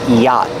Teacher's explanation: the vowel ah is the open ah sound like hot and stop together yacht the t is a stop T at the end after